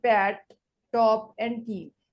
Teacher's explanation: They are the aspirated because they are pronounced with an accompanying forceful expulsion of air.